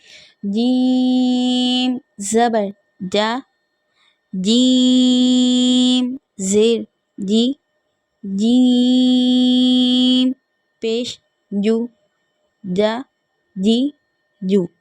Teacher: جیم کا بھی خاص خیال رکھنا ہے کہ جیم ادا ہوتے وقت ہماری چی جیسی آواز نہیں نکلنی چاہیے. بالکل ایزیلی ادا کرنا ہے.